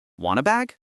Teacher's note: We do not say, "Do you want a bag?" We smash the words want and uh together. It becomes wanna.